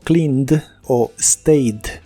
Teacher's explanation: esa ed se pronuncia solo como D, sin la E. Por ejemplo, el verbo cleaned o stayed, solo se pronuncia la D.